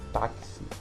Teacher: Ou seja, a gente escreve a palavra como nós temos aqui, táxi, a gente escreve com X, no entanto na nossa pronúncia sai o som do KS, táxi. Então, ele não é considerado um dígrafo, ele é chamado de difono, justamente é o contrário, aliás, é o contrário do dígrafo. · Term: encontro consonantal fonético